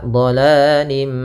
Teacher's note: sambil ditahan suara mimnya gunanya dua harakat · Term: idgham naqis